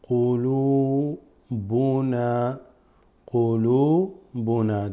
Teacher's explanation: This waw extends the lam just slightly. Has nothing on it because it's a sukoon.